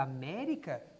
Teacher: a sílaba tônica da palavra américa também antepenúltima ela também é uma proparoxítona vejam que américa também não tem encontro vocálico não tem ditongo